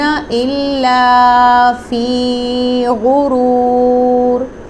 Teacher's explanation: غین مستعلیہ letter ہے، اس کو ہم نے پر اور موٹی آواز سے پڑھنا ہے، اور یاد رکھیں غین کی جگہ گاف کی ادائیگی سے ورڈ کے میننگ چینج ہو سکتے ہیں، لہٰذا غین کو ہی ادا کیا جائے گا۔